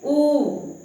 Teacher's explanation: बोल के देखिए, जैसे ऊ, है ना, तो ओठों की बनावट किस तरह, गोल आकार की। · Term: वृत्ताकार